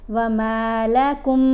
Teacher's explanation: اب ہم نے کیف کو یہاں اس میم سے ملانا ہے، مشدد میم سے، غنہ کرتے ہوئے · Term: میم کا ادغام